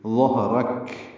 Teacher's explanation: اس پر زبر ہے، اور اس کو کاف سے ملائیں گے، کاف ساکن ہو جائے وقفن، اور اس پہ ہمس ہوگا، یعنی ہلکی سی سانس کی آواز جاری رکھیں گے